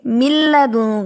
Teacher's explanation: لام اور را اس پر غنہ نہیں ہے، اس پر صرف ادغام ہے. جب آپ یہ پڑھیں گے نا مل لدوں کا، کچھ اسٹوڈنٹ پڑھتے ہوئے اس پر بھی لام پر آواز کو روک لیتے ہیں، مل لدوں کا، یہ بھی ٹھیک نہیں ہے.